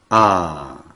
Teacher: it has to be spoken twice as long